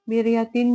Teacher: را ساکن سے پہلے زیر ہے تو را کو باریک ادا کریں گے